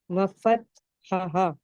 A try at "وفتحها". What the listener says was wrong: وفتحہا دونوں ہاں میں فرق ہونا چاہیے نا. دونوں ہا اور ہا میں فرق ہونا چاہیے.